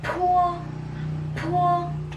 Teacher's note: While the letter P or the po, there's an air. It is aspirated.